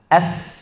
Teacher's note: Kalau hams, kita dua pita suara kita itu terlalu jauh, tidak dekat. Udaranya keluar atau nafasnya keluar, tidak ada gataran.